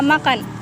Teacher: bunyi yang dihasilkan dengan aliran udara yang keluar melalui hidung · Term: bunyi nasal